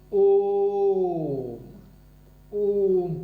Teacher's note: ओम में ये जो अ का उच्चारण है ये बहुत समय लगता है, इसलिए पुलुत स्वर है।